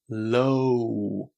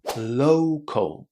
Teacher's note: I'm going from o to oo. O. O is a diff tongue. · O is a diphthong. It consists of two sounds, and you have to make sure that you say them. Because if you say this word with just an O sound, it sounds pretty bad.